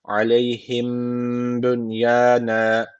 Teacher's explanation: burada dudak ihfası dediğimiz bir tecvit var. Ne yapıyoruz? Bir elif miktarı tutuyoruz dudaktan.